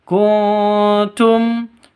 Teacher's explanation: non mati bertemu dengan ta, samar didengungkan, siap-siap ke huruf taknya. Ini ikhfa hakiki.